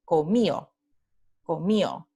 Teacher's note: en lugar de tener la aproximante, tenemos la elisión